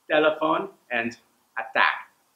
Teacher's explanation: It'll sound like the T sound is held back just a little bit and then released with less power in a non-aspirated way.